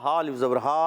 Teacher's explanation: ہا الف زبر ہا، ایک الف کھینچنا ہے